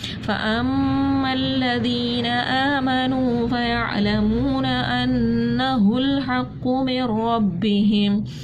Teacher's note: میم مشدد تھی, ہم نے یہاں پر غنہ کیا